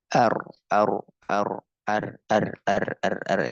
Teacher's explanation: makhraj huruf ra mendekati huruf lam dan dia lidhahrin dengan menggunakan lidah tapi ujung lidah saja ya adkhalu maka dia ke langit-langit paling dalam dia keluar dari situ ya ar ar ar ar yang paling dalam.